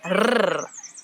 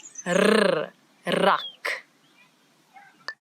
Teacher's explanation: This word it doesn't have the ch that we've been talking about, but now we've got a new sound in Afrikaans that a lot of people in different languages struggle with a little bit, and it's the rrr, as if your tongue is jumping up and down in your mouth